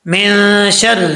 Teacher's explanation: نون ساکن کے بعد حروف اخفا میں سے حرف آ رہا ہے شین تو یہاں پہ غنہ ہوگا 1 الف کی مقدار